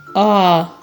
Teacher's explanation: він голосний чи приголосний так він голосний чому Тому що ми його вимовляємо без перешкод